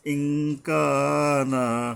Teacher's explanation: সরাসরি ন বলে আমরা অনুস্বর বলব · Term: ইফা